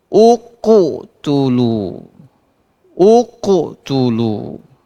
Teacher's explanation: Ini huruf sebelum qalqalahnya hamzah, barisnya dhammah. Maka bunyi pantulan qafnya berbunyi dhammah.